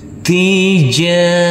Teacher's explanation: Dan di sini huruf alifnya kita anggap tidak ada. Tija, huruf jim kita baca panjang dengan panjang 2 harokat